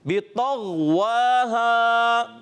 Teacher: غین حرف مستعلیہ میں سے ہے اور موٹے حروف میں سے, مگر اس کو کم موٹا رکھیں گے. اور اس میں کلکلا نہیں ہونا چاہیے, یعنی آواز لوڈ کرنا ہے.